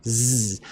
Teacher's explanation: It's z, just like that. Almost like an S, but like the hard Z sound, right? Almost like you're trying to do like a fly buzzing. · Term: zayin